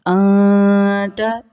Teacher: اور پہلے تا کے اوپر دیکھیے نون ساکن کے بعد تا ہے جو کہ حروف حلقی میں سے نہیں ہے، تو یہاں پہ اخفا ہوگا